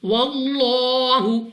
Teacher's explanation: اب یہاں پر ہمارے پاس لام آف اللہ سے پہلے حرف پر زبر ہے، تو یہاں پر اس لام آف اللہ کو پر یعنی موٹا پڑھیں گے